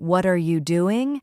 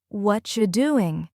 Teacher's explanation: instead of saying what are you doing, it becomes what you doing?